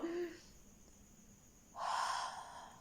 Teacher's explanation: ¿Suena? El sonido, la garganta, las cuerdas bucales no vibran. Es una salida liviana sin sonido. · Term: la J